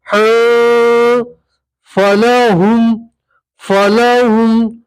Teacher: نون تنوین کا اخفا ہوگا، تنوین کو ناک میں چھپا کر پڑھیں گے